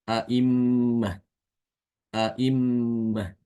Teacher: Dibaca takik maksudnya dia dibaca sesuai makhrajnya yaitu Hamzah yang ada di pangkal tenggorokan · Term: tahkik, tahqiq